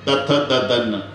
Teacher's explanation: नळ्याचा न म्हणताना दातालाच लागली पाहिजे जीभ, कारण ते दंते आहे.